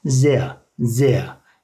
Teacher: R sonunda olunca A şeklinde yuvarlanıyor arkadaşlar